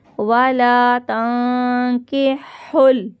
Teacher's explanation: نون ساکن کے بعد کاف ہے، اخفا کا گنہ کریں گے یہاں پہ